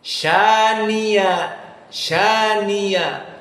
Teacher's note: Hamzah dalam keadaan berat diganti dengan ya